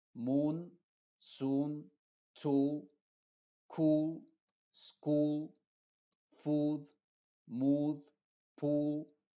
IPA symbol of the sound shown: uː